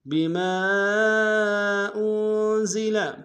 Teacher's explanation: بما میں میم کے ساتھ الف مدہ، الف مدہ کے اوپر مد منفصل ہے، کم سے کم دو الف انداز میں کھینچیں گے